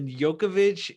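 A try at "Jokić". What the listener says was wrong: Jokovic. You're adding syllables. Adding.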